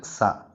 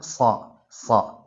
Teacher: കാണുന്നതുപോലെ സീൻ സ്വാദ് സീൻ സ്വാദ് രണ്ടും ഒരേ മഹ്റജിൽ നിന്നാണ് പുറപ്പെടുന്നത് നാവിന്റെ കൂർത്ത അറ്റത്തിൽ നിന്നാണ് സീൻ സ്വാദ് എന്നീ രണ്ട് അക്ഷരങ്ങൾ പുറപ്പെടുന്നത്